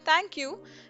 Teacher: a thank you with a rising tone thank you sounds rather casual